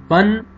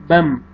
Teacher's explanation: آپ نے یہ فتحتین کا یہ نون ہے اس کو میم میں چینج کرنا ہے